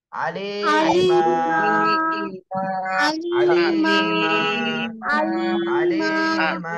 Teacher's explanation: তাহলে এখানে যদি আমি উচ্চারণ করতে চাই বা রিডিং পড়তে চাই, রিডিং এর সময় আলিমান আর পড়া যাবে না, আলিমা, এক আলিফ টান দিয়ে থামতে হবে।